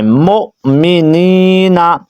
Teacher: میم کے آگے حمزہ دیکھ رہے ہیں اس کو ہم نے جھٹکا دے کے پڑھنا ہے